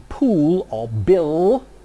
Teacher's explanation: the English velarized L as in pool or bill